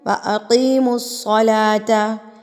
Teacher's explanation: ای کو میں لمبا کر رہی ہوں کیونکہ زیر سے پہلے یا ساکن سے پہلے زیر آ گئی ہے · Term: حروف مدہ